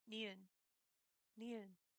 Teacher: It is an alveolar, meaning the tip of your tongue will be at the roof of your mouth and the back of your throat will be slightly more open.